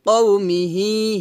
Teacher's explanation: লিকওমিহি কাউ হবে না, কওমিহি হি 3 আলিফ টান হবে